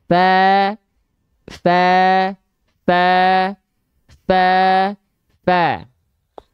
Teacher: Pangkal lidahnya kebalikan dari huruf tebal, yaitu pangkal lidahnya tidak diangkat atau terhampar. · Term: Huruf tipis